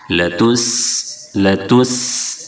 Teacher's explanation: سین میں پتلی سیٹی جیسی آواز نکالیں گے